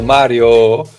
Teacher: He keeps the O as a simple vowel, Mario, instead of Mario, or instead of the British pronunciation.